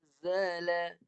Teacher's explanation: Perlu disembunyikan nun tu. Jangan sentuh tempat keluar nun. Sebab hukum dia tu memang tidak membenarkan sentuh rumah nun sebab nak bagi dengung dengan betul. · bila nun mati bertemu zai, dia ada hukum yang perlu didengungkan. Jadi kena dengung.